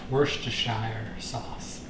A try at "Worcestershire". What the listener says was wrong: It's spelt Worcestershire sauce, but it's pronounced Worcester sauce. Worcester.